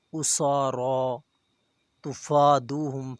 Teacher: سین اور را پر کھڑی زبر ہے، انہیں 1 الف کے برابر کھینچا جائے گا